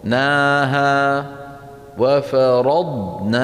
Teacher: على الضاد الساكنة أن لا يهتز آخرها، يعني ما يقول الواحد وفرضناها، فرض ض سمعانين هذا الض، هذا الصوت لا معنى له، صوت زائد، وفرض انتهت الضاد ناها وفرضناها، ولا نقول وفرض، تبهت كيف؟